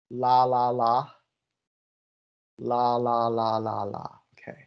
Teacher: the tip of your tongue is touching your alveolar that's the technical term for your gum or slightly behind your gum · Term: the l sound